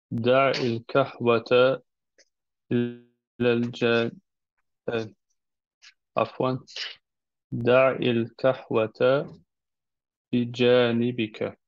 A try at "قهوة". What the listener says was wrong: Versucht den قاف ein bisschen besser auszusprechen. قهوة. Es ist also ein fataler Fehler bei einigen Wörtern, wenn du قاف mit كاف austauschst.